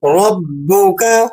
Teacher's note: را پر ضمہ ہے، تفخیم کے ساتھ ادا کریں، یعنی موٹا کر کے پڑھیں۔